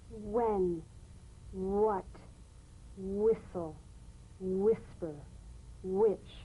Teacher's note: words that begin with WH are pronounced H w